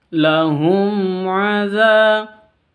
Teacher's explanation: Mim sukun bertemu dengan ain dibaca jelas karena bacaan izhar safawi.